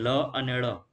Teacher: જે વ્યંજનોનો ઉચ્ચારણ કરતી વખતે જીભની બંને બાજુથી હવા પસાર થાય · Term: પાર્શ્વિક વ્યંજનો